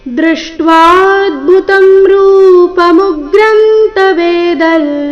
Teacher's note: ಇಲ್ಲಿ ಅನುಸ್ವಾರದ ಉಚ್ಚಾರಣೆ ನಾಸಿಕಾ ಲ ಬರಬೇಕು.